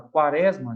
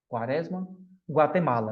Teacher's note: Já na palavra quaresma, já não é mais dígrafo, porque eu consigo escutar o som do U.